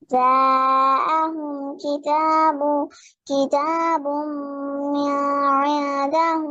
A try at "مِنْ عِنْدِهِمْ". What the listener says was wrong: মিনে গুন্না হবে না, নুন সুকুনের পরে আইন আসছে। আপনি দেখেন নুনের উপরে সুকুন আছে না, মানে হচ্ছে নুনটাকে পড়বেন, গুণনা হবে না। মিন ইনদিল্লাহি পড়েন। না, মিন গুণনা নাই, মিনি গুণনা নাই। নুন সুকুনের পরে আইন আসছে, ইজহার হবে, নুন ক্লিয়ার। ঠিক আছে, মিন ইনদিল্লাহি।